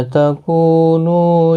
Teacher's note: ما الف مدہ ہے، کو واو مدہ ہے، نو واو مدہ ہے، تینوں کو ایک ایک الف کی مقدار کے برابر کھینچ کر پڑھیں گے